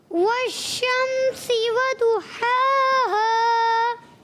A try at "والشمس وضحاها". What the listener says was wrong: اور ہا کو کلیئر کرنے کی کوشش کریں.